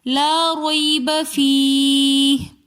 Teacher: یا لین ہے، تو اس لیے ہم اس کو کھینچ کر نہیں پڑھیں گے